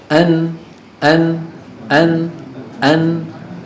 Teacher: من طرف اللسان مع ما يحاذيه من اللثه تحت مخرج اللام بقليل بقليل بقليل ويصاحبها غنه من الخيشوم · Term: النون